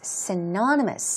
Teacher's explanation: Stress goes right there on the second syllable.